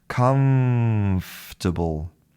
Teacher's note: So the lips do not come together to make a true M. But what we have is we have teeth and lips. · But what we have is we have teeth and lips. We have the same mouth position as for an F, but we have all of the sound coming out of our nose like an M.